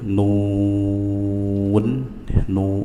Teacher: mereka. Jadi kita baca ya nuun ya nu ya dengan indimamusyafatain memonyongkan bibir kemudian akhiri dengan nun izhar jelas dan dibuka nun nun tiib wal ya lam sukun izhar jelas